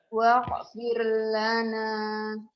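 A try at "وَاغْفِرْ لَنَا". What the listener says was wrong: Jangan wakfir lana orang Jawanya katanya. Ini ain mati sama gin mati itu orang Jawa kadang-kadang seperti itu. Wakfir jadi kekak semua. Itu bukan ka. Wa'fu anna waghfir lana. Satu ain a, satu g Agnes.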